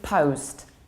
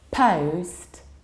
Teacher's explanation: Not always, but very often. So it is post in American English and slightly more open post in British version of accent.